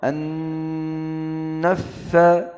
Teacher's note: Wa min syarri ini ada tahan dua harakat, tahan dua apa namanya? Ghunnah. Wa min syarri juga an naffasati tahan dua harakat.